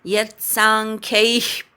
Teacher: यत् यवर आघात घ्यायचा. सांख्यैः अर्धा विसर्ग उच्चार.